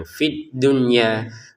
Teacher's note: Fi awalnya panjang tapi karena ada tasdid menjadi langsung tidak panjang